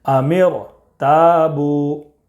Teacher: ام ایک کلمہ ہے، ارتابو یہ دوسرا کلمہ ہے. تو را ساکن سے پہلے زیر دوسرے کلمہ میں ہے، اس لیے را کو پر پڑھیں گے